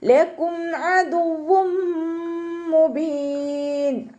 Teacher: തെൻവീനിലുള്ള നൂനിനെ മീമിലേക്ക് ലയിപ്പിച്ച് ഒന്നയോടുകൂടി ഓതാൻ ശ്രദ്ധിക്കുക. ലയിപ്പിക്കുകയും ചെയ്യുക, അതോടൊപ്പം തന്നെ ഒന്ന കൊടുക്കുകയും ചെയ്യുക കേട്ടോ.